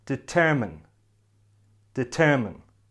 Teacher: This word has 3 syllables and the stress is on the second syllable. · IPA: /dɪˈtəːmɪn/